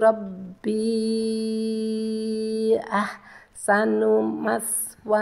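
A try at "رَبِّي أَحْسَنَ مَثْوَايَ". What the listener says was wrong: Ya, yang benar ahsana ya Ibu ya, bukan ahsanu ya. Ahsana maswai. Nanti ketika sudah i, maka i-nya nggak usah dipanjangkan. Jadi nggak usah ahsana maswai, nggak. Cukup ahsana maswai. I-nya sudah tidak usah dipanjangkan lagi.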